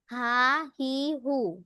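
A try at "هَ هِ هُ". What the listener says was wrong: হ্যাঁ, এই যে হা টান হয়ে যাচ্ছে কিন্তু। হায়ের মাখাজটা একটু সুন্দর করে বলতে হবে, হ্যাঁ, হলকের মধ্যখান থেকে।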